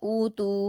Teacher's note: ता पर वा मद्दा है दो हरकात खींचेंगे